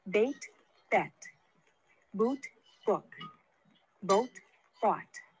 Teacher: the vowel sound in the first word of each pair is tense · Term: tens lacks